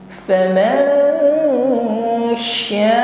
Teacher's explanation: Dan sukun bertemu shin ikhfa, ya. Kita mengucapkan nun faman, kita samarkan atau kita siapkan pada makhraj huruf shin, ya. Faman sya, panjangkan 2 alif atau 4 harokat, ada mad wajib muttasil.